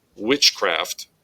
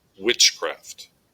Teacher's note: the word witch gets the emphasis, gets that accent point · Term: trochaic